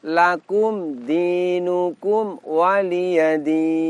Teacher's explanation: mim sukun disini kedua-duanya dibaca jelas Apa sebab karena mim sukun tersebut tidak bertemu dengan huruf mim · Mim sukun harus dibaca jelas, tidak boleh memantul dan tidak boleh mendengung. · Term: Idhar syafawi, idhar syafawi